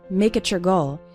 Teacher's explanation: And you can see something funny happening with the words make it your. When we have a word ending in T, followed by the word you or your, it often sounds like a CH sound, ch. So make it your goal sounds like make it your goal.